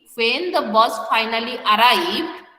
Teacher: rising बोलेंगे that means द sentence is incomplete